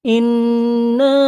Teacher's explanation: ইন্না এক আলিফ গুন্না হবে, না চার আলিফ টান হবে, কারণ এটা মাদ্দে মুনফাসিল।